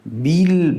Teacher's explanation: اگر صفت جهر و شدت در با مراعت نشود با ما به پ تبدیل میشه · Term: صفت شدت و جهره